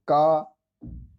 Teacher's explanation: अल्प प्राण का अर्थ होता है, प्राण का अर्थ वायु। इसके उच्चारण में फेफड़ों से बाहर निकलने वाली वायु की मात्रा कम होती है